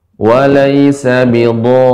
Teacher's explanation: Jadi rinya tidak rihim, bukan. Tapi rinya pendek.